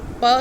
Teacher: प साउंड जब आपने प्रोड्यूस की तो आपके दोनों लिप्स मिले और आपका एयर जो है वो ब्लॉक हो गई. आपके जो वोकल ट्रैक है उसमें एयर फ्लो ब्लॉक हो गया और आपके नाक से हवा निकली, तो इसलिए इसको स्टॉप कहेंगे.